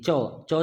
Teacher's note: आपकी जीभ ऊपर वाले हिस्से में लग रही होगी तो वो होता है आपका तालु